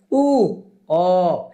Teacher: आपलं तोंड गोल होतं बघा म्हणताना, वृत्ताकार. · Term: वृत्ताकार स्वर